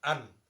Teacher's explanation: তনবিন যখন আপনি পড়বেন একটা নুন লুকিয়ে থাকে